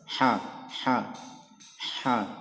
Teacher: huruf H dia makhrajnya di tengah tenggorokan. Tenggorokan bagian tengah.